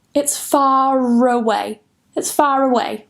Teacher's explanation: Normally, we would say far, but here, because away starts with a vowel, we're going to link it with a R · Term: linking R